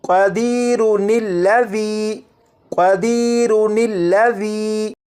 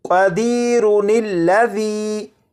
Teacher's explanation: ان دونوں الفاظ کے درمیان میں نون کا اضافہ کریں گے اور اسے پڑھیں گے قدیرن الذی، اور بعض اوقات نون قطنی